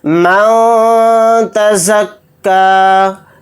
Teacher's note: نون کی آواز کو ناک میں چھپا کر اخفا کے ساتھ اس طرح سے پڑھیں گے